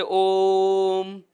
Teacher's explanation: जैसे एक बार ओ बोलना है, ये एक ही बार ओ बोलोगे, लेकिन इसके आगे 3 लिखने का मतलब यह हुआ कि ओ को आप इतना लंबा बोलिए कि जितना 3 ओ बोलने में समय लगता है उतनी देर तक आपको लगातार ओ का उच्चारण करना है। जैसे ओम, इसका मतलब क्या हुआ कि जो ओ की ध्वनि हम लंबे समय तक लगातार बोल रहे हैं वह प्लूत बन गई है।